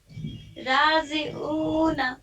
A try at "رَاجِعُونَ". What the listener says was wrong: हाँ, राजे नहीं, राजी है, जी जी है।